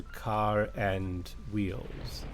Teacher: the r is absent but the r shows up again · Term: linking R